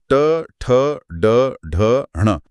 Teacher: ट वर्ग यानी ट, ठ, ड, ढ, ण में जीभ और पीछे मुड़कर मूर्धा से टकराती है।